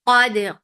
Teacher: keep qaf heavy but dal light